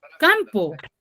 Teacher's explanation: campo tiene la mayor fuerza de voz en la penúltima sílaba. Yo ya sé que es una palabra grave, pero yo no coloco la tilde.